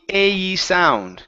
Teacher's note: what you need to work on is pronouncing the A. Okay, it's a diphthong. It's two sounds together. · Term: long A sounds